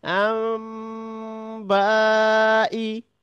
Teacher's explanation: তাহলে নুন সাকিন ও তানভনেরর পরে যদি বা আসে তখন নুনটাকে মিম দ্বারা পরিবর্তন করে পড়তে হয় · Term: ইকলাব